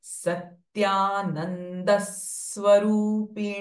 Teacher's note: Because this swa is a conjunct sound, it will have a pressing effect.